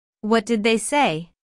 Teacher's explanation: Notice how say is emphasized, but the intonation falls at the end of the word. This is a what question, so the intonation falls at the end.